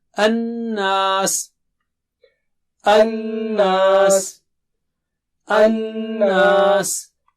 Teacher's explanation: یہاں پر غننے کا مطلب کیا ہے؟ ناک سے آواز نکالنا اور ڈبل کھینچنا. الناس الناس الناس. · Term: غنہ